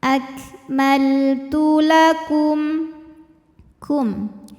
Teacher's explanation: Ada hukum izhar syafawi, sebab ada mim sukun menghadapi huruf selain mim dan ba. Di sini hurufnya adalah huruf dal. Maka mim sukun kita bunyikan dengan jelas.